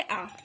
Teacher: आ का उच्चारण स्थान कंठ होता है